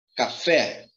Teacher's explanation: A sílaba mais forte de café está no fé.